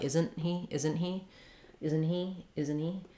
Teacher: When I'm making that stop T, my tongue goes up to the T position, but it doesn't release. That means that the N is going to be very short.